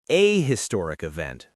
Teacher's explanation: People think it should be an historic because H can sometimes be silent. But in modern English, especially American English, we pronounce the H in historic. So it should be a historic event, not an historic event.